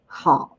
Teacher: 好 with the third tone, the falling rising tone.